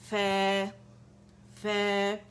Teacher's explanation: फै बतनी शफत सुफला, ऊपर जाके सनायोले के एजेस को नरमी से लगेगा